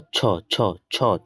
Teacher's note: छ का उच्चारण स्थान तालू है